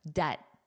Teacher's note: there's no B. It's there for spelling but not for pronunciation. So it's a silent letter.